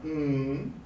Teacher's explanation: the two lips close completely no air or voice passes through the mouth · allowing the voice to travel through the nose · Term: nasals